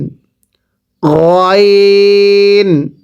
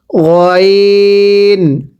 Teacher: আইনটা চাপ দিয়ে পড়বেন আইন, গলার মাঝখানে চাপ দিতে হবে আইন। গয়ন, এটা গলার মাঝখান থেকে উচ্চারণ হবে, চাপ দিবেন না